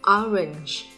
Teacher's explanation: Endings trong trường hợp này bình thường được bật âm là j. Tuy nhiên khi nó trở thành endings thì nó sẽ yếu hơn và đọc là j